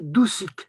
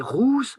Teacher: Donc là, c'est un ou bref, mais rousse, c'est un ou long.